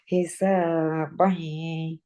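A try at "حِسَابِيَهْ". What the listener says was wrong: হ্যাঁ এখানে নাকে উঠছে তার মানে আটকে গেছে যদি আপনি নাক দিয়ে না বলতেন তাহলে এইভাবে বলতেন দেখেন আমি নাকে চাপ দিয়েও ধরবো তারপর চলে যাবে দেখেন হিসাবাই ইয়াসির আমি নাক স্পষ্ট আসতেছে কিন্তু নাক কিন্তু পুরো চেপে ধরে রেখে দিচ্ছি আমি বাড়ি সুন্দর পড়ে গেলাম আমি হিসাবাই ইয়াসির আমি যদি নাকটা চেপে ধরে নাকে নেওয়ার চেষ্টা করি হিসাবাই আসে না সাউন্ড তাই না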